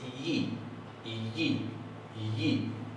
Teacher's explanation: recuerden que básicamente es una I un poco más cerrada. En vez de ser una I, es una yi, la yod.